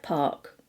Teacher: in British English we don't pronounce the R if it has a consonant afterwards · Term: non-rhotic